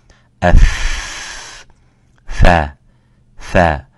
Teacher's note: And if you put your palm or your hands against your mouth and by pressing the top incisors against the lower bottom lip, you will find out how we produce this letter by saying f, fa, fa. Of course, by exhaling the air, that's the quality of the fa. It's called al-hams.